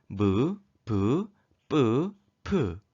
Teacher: 두 입술이 닿았다 가떨어지며 나는 소리입니다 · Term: 입술 소리